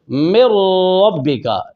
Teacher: جیسا کہ من ربک، یہ میم ڈائریکٹ را سے مل رہی ہے، نون اور را میں داخل ہو گیا، نون کی کوئی صفت باقی نہیں رہی، لہذا یہ ادغام متقاربین تام ہوا۔